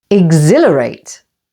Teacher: Exhilarate with the main stress on the second syllable